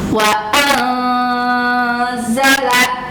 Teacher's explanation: bunyi nun mati atau tanwinnya disamarkan, tidak jelas ke nunnya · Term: ikhfa